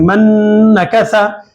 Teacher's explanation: नून के बाद नून आ रहा है, तो नून की आवाज को बाद के हर्फ में मिलाएंगे और गुन्ना करेंगे